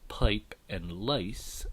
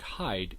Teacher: Canadian raising relates to the diphthongs I and ow, and it's called Canadian raising because rather than starting with a low vowel, the ah sound, they start with a central vowel, an sound, a mid-vowel there.